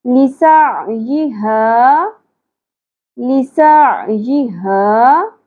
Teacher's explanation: ہا اقصی حلق سے گہرائی کے ساتھ، الف حرف مدہ ہے، ایک الف کے برابر کھینچیں گے